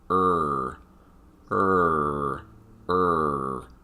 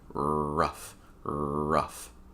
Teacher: you can hear the front of my tongue curling up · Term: R sound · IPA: /r/